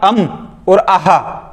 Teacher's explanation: जब भी आप अम और अहा बोलोगे तो आपके नाक और मुंह दोनों से ध्वनि निकलेगी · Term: अनुनासिक